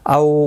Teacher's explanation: واولین ہے، تھوڑا نرمی کے ساتھ آدھے الف کی مقدار کے برابر کھینچ کر پڑھیں گے